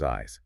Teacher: The only difference is that buzz in your throat for the Z sound.